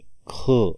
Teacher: क मध्ये ह मिसळल्यावर ख असा उच्चार ऐकू येतो आपल्याला म्हणून हा महाप्राण मिश्रित व्यंजन वर्ण आहे